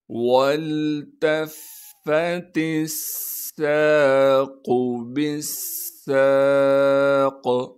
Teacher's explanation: سین میں سیٹی ادا کریں گے، سین کے بعد الف مدہ ہونے کی وجہ سے سین کو ایک الف کے مقدار کھینچیں گے، قاف کو موٹا کر کے پڑھیں گے بغیر کھینچے۔ · قاف کو موٹا کر کے پڑھیں گے بغیر کھینچے۔ قاف کو موٹا اس لیے کریں گے، قاف موٹے حروف میں سے ہے۔ · با کو سین سے ملا دیں گے۔ ادھر بھی با کے بعد الف اور لام موجود ہے، انہیں ہم نہیں پڑھیں گے۔ با کو سین سے ملانا ہے کیونکہ سین پر تشدید ہے۔